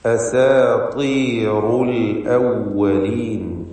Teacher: അന്ത്യത്തിൽ വന്ന റാഇനും തഫ്ഖീം കൊടുക്കുക